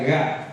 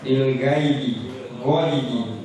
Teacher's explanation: Karena makhrajnya tenggorokan paling atas dan sifatnya isti'la. Gha. Isti'la itu yang ada nada o ya.